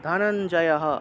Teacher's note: উচ্চারণ হবে তাহলে ধনঞ্জয়হ এই হ টা পূর্ণ উচ্চারণ হবে ধনঞ্জয়হ একটা লাইনের শেষে বিসর্গ থাকলে হ টা পূর্ণ উচ্চারণ হবে